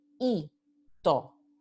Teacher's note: tenemos dos vocales idénticas en sílabas diferentes, entonces están en hiato y se indica con el acento ortográfico.